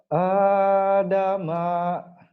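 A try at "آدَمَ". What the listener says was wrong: Ma-nya pendek. Adama pendek ma-nya.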